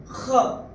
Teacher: ख गले से ख फ्रॉम द एपिग्लॉटिस।